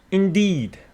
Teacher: indeed, with the stress on the second syllable